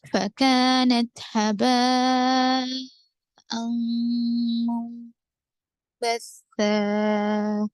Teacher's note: نون ساکن کے بعد با ہے، اس وجہ سے یہاں اخلاب ہے، نون کو میم سے بدل کر پڑھیں گے